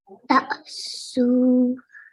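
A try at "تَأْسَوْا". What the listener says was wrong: Remember, there is a fatha on top of the tha. So it's ta, thaw.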